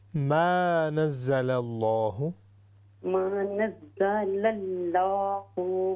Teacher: ہاں جی ماں کو ہم لمبا کریں گے.